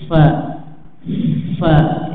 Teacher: sehingga tidak ada celah nafas untuk keluar, ya, fa, ya, tapi makhrajnya itu bibir bagian bawah, bagian dalam, ya, menempel pada ujung gigi seri atas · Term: huruf fa